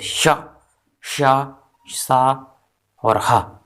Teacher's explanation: ऊष्म व्यंजन होते हैं श, श, सा और हा। ये महाप्राण होते हैं।